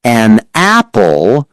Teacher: When a word ends with a consonant and the next word starts with a vowel, the sound often glides. In an apple, the N and A glide. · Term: Linking